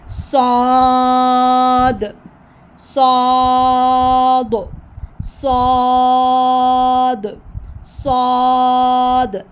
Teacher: पढ़ा ये भी सीन की तरह जाता है लेकिन इसकी आवाज़ बारी होती है, तो हमने इसको माउथ को ओपन करके अदा करना है और साथ में आवाज़ बारी होगी, हैवी साउंड होगी, ठीक है।